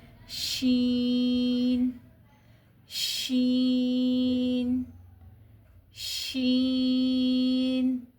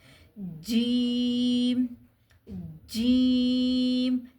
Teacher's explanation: اب جو زبان کا درمیانی حصہ ہے اس کو اوپر تالو سے نہ تو چپکانا ہے، نہ ہی کسی قسم کا بھی اس پہ کسی اور طرح سے ایکشن کرنا ہے، بلکہ صرف جو ہے زبان کا درمیانی حصہ وہ اوپر تالو کے قریب جائے گا، جیسا کہ شین، شین، شین۔